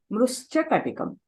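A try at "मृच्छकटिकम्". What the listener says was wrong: Mrichakatikam. Miru mruscha annara, mricha annara. Mrischa antunnaru. Sa tarvata chakaram leda akkada. Chakaram tarvata chakaram. Mrichakatikam. మామూలుగా మనకి ఎప్పుడు కశ్చన అన్నప్పుడు షకారాత్ పరే చకారః అస్తి. మీరు ఆ అలవాట్లో ఇక్కడ మృశ్చ అంటున్నారు. మృశ్చ కాదు, మృత్ష. మృచ్ఛకటికం.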